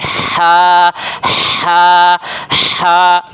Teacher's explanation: یہ وسط حلق، حلق کے درمیانی حصے سے ہا ادا ہوتی ہے، حلق کے درمیانی حصے سے۔